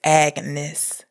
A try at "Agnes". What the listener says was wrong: There's not a single person in the entire movie that pronounces a hard G, Agnes.